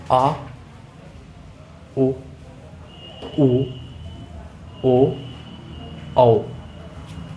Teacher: इन स्वरों का उच्चारण करते समय जीभ के पीछे का भाग काम करता है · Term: पश्च स्वर